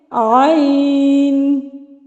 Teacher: حلق سے آئے گی آواز، وسط حلق سے